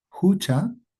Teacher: Habíamos dicho que esta ja, la H, la voy a pronunciar como una J bien suave, como una J del español, pero bien suave